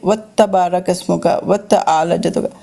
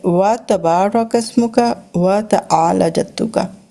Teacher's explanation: ہم لوگ اچھا چھوٹے ہوتے سے پڑھتے تھے وت تبارک اسموں کا وت اعلی جدوں کا، تو یہ رانگ ہے، یعنی کہ ہم نے تا کو علیحدہ رکھنا ہے، تا پہ شدہ کوئی نہیں ہے